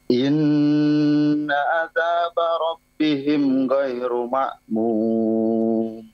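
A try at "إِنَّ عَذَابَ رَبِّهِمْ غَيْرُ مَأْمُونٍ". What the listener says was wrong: diperjelas lagi ain sama ghainnya.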